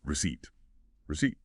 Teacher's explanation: That P is completely silent. You just don't say it. · Notice the stress is on the second syllable is ce e p. And that first part a is usually a reduced vowel sound like r, not re.